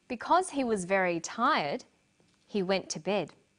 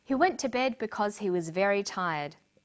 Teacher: Because he was very tired, he went to bed. Notice the pause. He went to bed because he was very tired. There's no pause.